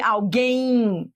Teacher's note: Esse M é como se fosse um I, alguém. E aí seria um ditongo decrescente, que você vai do forte para o fraco.